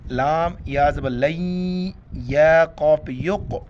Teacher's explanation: یہاں پر لام کو ڈائریکٹ یا کے ساتھ ملائیں گے، نون یا میں کنورٹ ہو جاتا ہے، نون کو نہیں پڑھیں گے